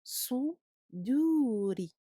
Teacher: on emphatise le sou et on amincit le dou et on amincit le ri parce que ici le ra est maksour, il doit être aminci contrairement à contrairement au ra maftouh ou madmoum.